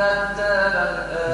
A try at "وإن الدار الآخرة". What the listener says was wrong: دار مش الدار كيف أقول الدار تتمرى الدار را مفخمة